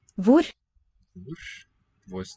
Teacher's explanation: Devoicing of the R there.